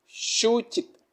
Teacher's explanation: larga la primera, corta la segunda